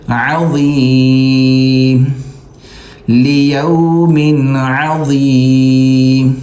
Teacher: لام زیر لی، یہاں واو زبر یو، میم 2 زیر من، یہاں پر اخفا نہیں کریں گے، غنہ نہیں کریں گے کیونکہ آگے حرف حلقی ہے عین ، ٹھیک ہے، لیوم، عین زبر ع، عین حلق سے نکالیں